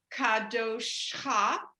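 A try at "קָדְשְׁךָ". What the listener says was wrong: So now this is tricky. The dot for the shin is not a vowel. Kad shacha, perfect. that first dalet has the shava under it. The dot is not its vowel.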